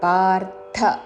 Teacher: ర కి మహాప్రాణాక్షము థ వత్తు పార్ధ అని ధ పలకూడదు